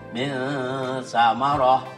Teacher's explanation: maka cara membacanya adalah samar antara ijhar dan idgham. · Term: ihfa